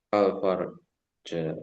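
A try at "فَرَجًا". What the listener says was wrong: bukan farja ya astagfirullah faroja kalau farja bahaya sih artinya farja kemaluan kalau faroja makhraj jangan sampai ketukar ya faroja makhraj jalan keluar kalau farjo itu zakar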